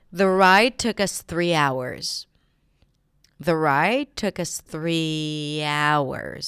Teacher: Stress on hours, right? On that noun.